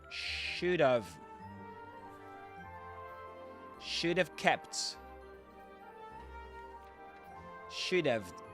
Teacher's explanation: this have is not have, not pronounced as have, but of.